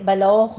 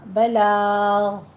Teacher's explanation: غین کو آپ نے پر کرنا ہے، سٹاپ کرنا ہے، قلقلہ نہیں کرنا